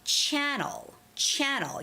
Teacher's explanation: So channel is the first syllable stress word. So it's got to be channel.